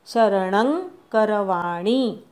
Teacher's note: शरणं न वरच्या अनुस्वाराचा ङ म्हणायचा. अंग म्हणतो तसा.